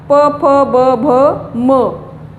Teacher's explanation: आणि ओष्ठ ओठांद्वारे प फ ब भ म, ओठांचा उच्चार होतो.